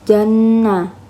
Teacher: nunnya dibaca gunah dengung karena Nun bertasydid